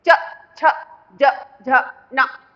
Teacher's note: आप इसको बोलो च, तालू का जो ऊपर का हिस्सा है, टाइट वाला हिस्सा, टाइट मसूड़ा जो है वो वहां से टकरा कर आवाज निकल रही है, च छ ज झ न। तो ये तालू से टकरा कर अक्षर निकल रहे हैं तो इनको क्या बोलते हैं, तालव्य ध्वनियां।